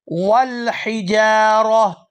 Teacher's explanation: वक़ूदुहन्नासु वल हिजारा, वल हिजारा, यहाँ वक़फ़ करेंगे और वक़फ़ की सूरत में ये जो ता है ये हा के अंदर कन्वर्ट हो जाएगी